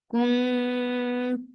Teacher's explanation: Kuntum for dhamma circle ellipse attach with meme, and this is idgham shafawi, so give a longer gunna, akmal gunna, so keep the sound in your nose for a longer time.